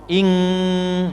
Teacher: Karena makhrajnya pada kaf sehingga suaranya menjadi ngo. Ing ya, bukan i tapi ing jadi ngo.